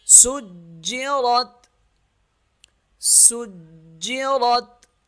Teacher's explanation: را تا زبر رت، را موٹی پڑھی جائے گی کیونکہ را کے اوپر زبر ہے، سجرت، سجرت، وقف بھی ایسے کریں گے سیم، سجرت، سجرت۔